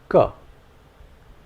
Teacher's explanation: try saying this while releasing as little air is possible there should be no unnecessary gush of air